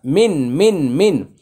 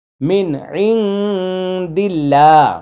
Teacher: নুন সাকিনের পরে দাল আসছে, ইকফা গুন্না।